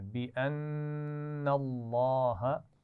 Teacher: نون پر غنہ ہوگا اور لام جلالہ کیسے پڑھیں گے؟ موٹا موٹا پڑھیں گے